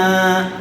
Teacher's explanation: وما حرف مدہ کے بعد حمزہ دوسرے کلمے میں آیا ہوا ہے، اس لیے مد منفصل کا قاعدہ ہوگا، میم کو حرف مدہ کے مقابلے میں تھوڑا زیادہ کھینچ کر پڑھیں گے۔